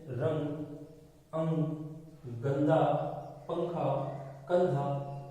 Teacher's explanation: इसका उच्चारण करते समय ध्वनि नासिका से निकलती है, यानी कि जो इसका उच्चारण किया जाता है अनुस्वार का, उसकी जो ध्वनि है वो नासिका के रूप में निकलती है, तो नाक से उसकी ध्वनि आती है।